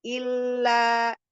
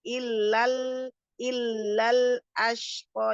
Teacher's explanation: Jadi langsung masuk ke huruf sukunnya huruf madnya hilang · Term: pertemuan dua sukun